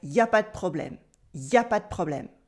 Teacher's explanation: Il n'y a pas de problème becomes y a pas de problème, or simply pas de problème.